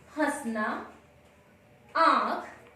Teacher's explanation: अनुनासिक का उच्चारण नाक और मुंह दोनों से होता है